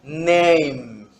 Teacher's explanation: It's voice because we have vibration in our vocal cords. It's nasal.